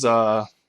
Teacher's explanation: The pitch goes down and then back up in this inverted caret kind of symbol here, da.